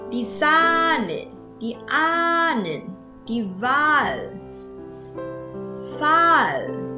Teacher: Ha ở đây là âm câm, vì vậy mình phải đọc dài. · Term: A dài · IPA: [a:]